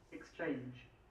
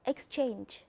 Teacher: the stress falls on the second syllable for a verb. We have the second syllable stress.